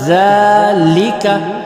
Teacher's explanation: زال چھوٹے حروف نرم حروف میں سے ہے اور زبان کی نوک سے زال کو ادا کرنے کی کوشش کریں